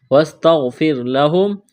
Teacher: غین کو موٹا کرنا ہے، را ساکن سے پہلے زیر ہے تو را کو باریک کرنا ہے